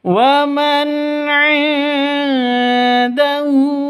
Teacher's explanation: nun mati bertemu dengan ain, jelas terang karena bacaan izhar halqi. Non matinya jelas, ainnya jelas, tidak boleh panjang.